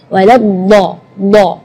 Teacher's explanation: Huruf dhad itu keluarnya dari pinggir lidah maupun yang kanan ataupun yang kiri atau dua-duanya.